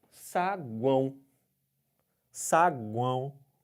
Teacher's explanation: Parece que está gripado falando, né? Por isso mesmo, porque um som sai pelo nariz. Se você tampa o nariz, esse som fica abafado. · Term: tritongo nasal